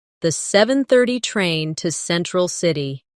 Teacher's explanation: Do you notice how to almost disappears? It blends into the next word sounding like to central city.